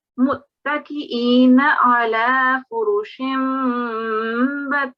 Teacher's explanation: have a bit of a nun ghunna sound in your mouth, catch it, and then let loose of it because we've got ba in the following